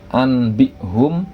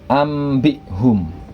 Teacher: mengganti huruf nun mati atau tanwin menjadi huruf mim mati disertai dengan dengung · Di situ ada anbihum yang seharusnya nun mati bertemu dengan ba dibaca anbihum, tetapi karena ba adalah huruf iqlab, nah maka nun mati tersebut berubah menjadi mim mati. Yang tadinya anbihum menjadi ambihum.